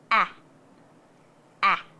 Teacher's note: stop it with your throat and say ah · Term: short A sound